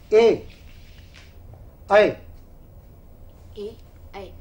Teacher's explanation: जिनका उच्चारण कंठ और तालू के द्वारा होता है वे वर्ण कंठ तालव्य कहलाते हैं